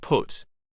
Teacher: P. Voiceless bilabial plosive put.